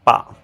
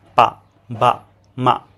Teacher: এই যে দেখেন ডায়াগ্রামে দেখেন দুইটা ঠোট একসাথে আসছে। যখনই দুইটা ঠোট একসাথে আসবো ওই সাউন্ডটাকে আমরা বলি বাইলেভিয়াল সাউন্ড। · অর্থাৎ বাইলেবিয়াল মানে হচ্ছে দুই ঠোঁট। যখন আমাদের দুই ঠোঁট একসাথে আসে তখন সেই সাউন্ডটাকে বলা হয় বাইলেবিয়াল সাউন্ড।